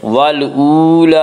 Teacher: لام کے اوپر کھڑا زبر ہے، کھڑا زبر کو 1 الف کے برابر کھینچ کر پڑھیں گے